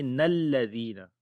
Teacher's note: نون کو لام کے ساتھ ملائیں گے